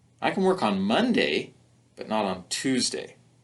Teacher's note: the rising and falling pattern there helps emphasize that there's a contrast and a choice